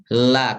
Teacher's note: Yang lam itu penyimpangan suara huruf lam keluar melalui samping dua sisi lidah karena ujung lidahnya menghalangi jalur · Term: inhiraf